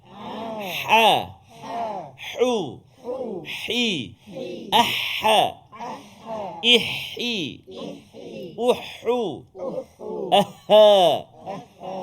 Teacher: Di manakah letaknya huruf ha? Iaitulah di tengah-tengah rongga kerongkongan kita, al-halq kita